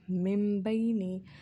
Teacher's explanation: Otherwise, we have to remember that whenever ba is preceded by noon sakin or tanween, then we have to read meme instead of noon, and we have to prolong the letter for approximately 2 seconds. So we will read these words as mimbaini. · I am not creating the sound of noon here. Instead, I am producing the sound of meme here, and I am following the rule of iqlab here.